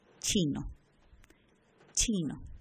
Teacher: La primera consonante es la primera consonante que tiene cada una de las palabras. Africadas, la oclusión es seguida de fricación